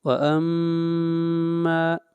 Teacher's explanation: میم کے اوپر غنہ، آواز ناک میں جائے گی. ما کو لمبا کریں گے ایک الف کے برابر.